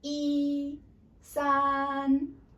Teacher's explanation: It's high pitch and consistent. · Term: flat tone